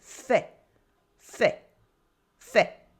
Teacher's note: We have bien with the nasal sound un, bien, bien, bien, bien, and fait with the ai that sounds like a e sound and the silent t at the end